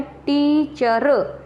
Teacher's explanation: टी जोर से बोला जा रहा है, स्ट्रेस हो गया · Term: बलाघात